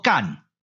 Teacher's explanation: 但是入声派入上声，所以这个字就要读作第2调，也就是好的声调 ，所以就要读作干。讲到即摆为止，咱已经知影这个字上少就有2种的音甲声调。第一种的读法就要读作入声，读作甲。甲若是危险，咱就莫去啊。第二种的读法，爱读作上声，读作干。即个字若是读作上声的时阵，转调就爱对第二调转第一调，第一调对应的就是西的声调，所以即